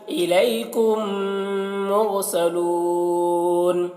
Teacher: میم ساکن کے بعد میم ہے تو یہاں پر ادغام شفوی ہو رہا ہے یعنی میم کو میم سے ملا کر پڑھیں گے. میم کو میم سے ملا کر پڑھنے کا صاف مطلب یہ ہے کہ میم کو نہیں پڑھیں گے اس میم کو نہیں پڑھیں گے.